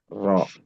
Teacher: ujung lisan dan punggungnya bertemu gusi gigi seri atas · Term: makhrajnya